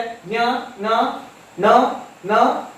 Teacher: ಮೂಗಿನ ಸಹಾಯದಿಂದ ಉಚ್ಚರಿಸುವಂತಹ ಅಕ್ಷರಗಳನ್ನು ನಾವು ಅನುನಾಸಿಕಗಳು ಅಂತ ಹೇಳಿ ಕರಿತೇವೆ.